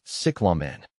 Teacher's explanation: The emphasis is on the first syllable, with the E in the second syllable sounding like ah.